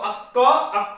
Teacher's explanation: अक्क और अक्ख, इनका जो उच्चारण स्थान है वो जिह्वामूल है। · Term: जिह्वामूलीय